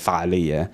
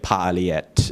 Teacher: Most Arabic loan words will turn the F into a P. So you get pa'aliyat instead of fa'aliyya.